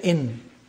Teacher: the n is pronounced from behind the teeth